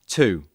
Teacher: listen and repeat these questions paying attention to their rising intonation